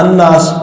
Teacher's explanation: تو وہ لام کا نون میں ادغام ہو گیا، تو اس وجہ سے لام کی آواز نہیں آتی